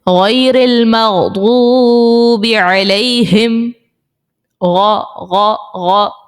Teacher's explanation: وہ جو غرارے میں آواز آ رہی ہوتی ہے وہی ہم نے غین اس طرح سے نکالنا ہے. بس اس چیز کا خیال رکھنا ہے کہ حلق کے اوپر والے حصے سے وہ آواز نکلے